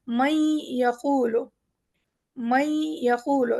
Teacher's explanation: ایک نون کا غنہ دیتے ہوئے یا کی آواز نکالیں گے · یقولو، نون کا ایک چھوٹا سا غنہ آئے گا اندر سے، دو حروف کو ایک ساتھ جیسے جوڑ دیا گیا، نون اور یا کو ملا کے ایک نیا حرف ہم نے بنایا